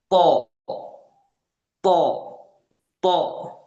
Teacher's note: To, to, ya, di apa, ditaruh dulu ujung lidahnya ini dengan pangkal apa namanya, pangkal gigi seri bagian atas, ya, ditaruh dulu, baru kemudian kita lafalkan harokat fathahnya itu, to, to, to, ya. Terasa tebal dan dia tegas tanpa ada hames atau helaan nafas di situ, ya. Bukan to, itu salah. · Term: huruf to